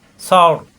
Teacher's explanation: সা নরম কিন্তু র মোটা, সর। র সাকিন ডানে জবর, এই জন্য এখানে সাকিন হয়ে যাবে অক্ষ করলে।